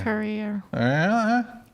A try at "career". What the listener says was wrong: You know, there are vowels and vowels exist. Vowels. You're just making guttural noise.